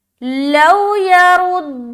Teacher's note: واو ساکن سے پہلے زبر آ گیا تو واولین ہو گیا، لہٰذا نرمی کے ساتھ جلد ادا کریں گے